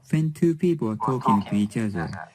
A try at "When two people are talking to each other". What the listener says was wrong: Now, I don't know if you noticed, but you didn't pronounce the R in there, the be verb, the auxiliary verb there. Now, I know that you need to put more stress in the main verb.